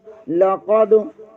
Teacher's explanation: دن، لام کے اوپر زبر ہے، لام کو بریک پڑھیں گے، قاف زبر کو دال کے ساتھ ملائیں گے، یہاں دال ساکن ہے، یہاں بھی قلقلہ ہوگا۔